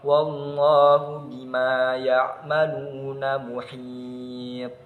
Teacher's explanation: jadi to-nya itu dibaca memantul lebih kuat daripada yang qalqalah sughra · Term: qalqalah kubra